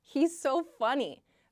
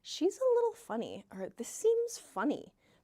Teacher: notice I said a little funny with downward intonation